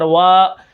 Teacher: ٹھیک ہے، واو الف زبر وا، ہم اس کو 1 الف کے برابر کھینچ کر پڑھیں گے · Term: الف مدہ